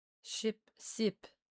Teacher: So, sheep becomes seep or seep.